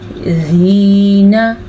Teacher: नून के ऊपर बड़ी ज़बर है तो इसे हम लंबा नहीं करेंगे